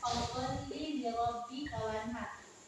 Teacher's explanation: nun matinya ada di sini, bertemu dengan huruf ha tipis. Jadi dibaca jelas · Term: izhar halqi